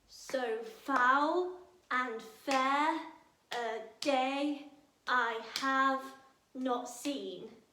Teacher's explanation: there are 10 syllables. So foul and fair a day I have not seen. And that you want to stress every other syllable. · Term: iambic pentameter